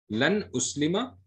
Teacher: The noon will be completely zahir.